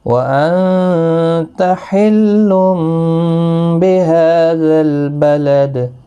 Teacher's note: لا اقسم بهذا البلد وانت حل بهذا البلد، نون ساکن پر اخفا ہوگا، تنوین کے بعد با آیا ہے، یہاں پر قلب ہوگا، تنوین کی آواز میم میں بدل جائے گی۔ ہا کو 1 الف کی مقدار کے برابر کھینچیں گے، لام ساکن کو ہلانا نہیں، دال ساکن پر قلقلہ ہوگا وقف کی صورت میں۔